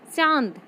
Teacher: चंद्रबिंदु लगे शब्द का उच्चारण करते समय उच्चारण नाक और मुंह दोनों से होता है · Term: अनुनासिक